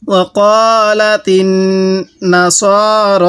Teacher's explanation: এই নুনের মধ্যে আমরা গুন্নাহ করব, কারণ মিমে নুনে তাজদিদ হলে সেখানে আমাদের গুন্নাহ করা ওয়াজিব হয়ে যায়। তো নুনের উপর তাজদিদ আছে, এজন্য আমরা এখানে গুন্নাহ করব।